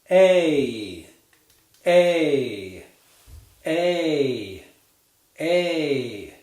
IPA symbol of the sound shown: eɪ